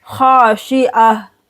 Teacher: ख को मोटा पढ़ेंगे, अलिफ के साथ मिलाकर 2 सेकंड के लिए खींचेंगे। खाशी आइन हा ज़बर आह, खाशिआ।